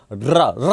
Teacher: रा बोलने में जीवा पहले कंपन करती है, इसलिए इसको प्रकंपित कहते हैं। और प्रकंपित के साथ साथ ऐसा लगता है जैसे ये इसके उच्चारण में ये जीवा से लुढ़क रहा हो, इसलिए इसको लुंठित वर्ण भी कहते हैं।